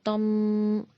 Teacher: تا زبان کی نوک سامنے کے دو دانتوں کی جڑ میں لگانے سے ادا ہوتا ہے